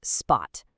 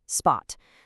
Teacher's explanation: You feel almost no puff of air on that P. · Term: Mandarin B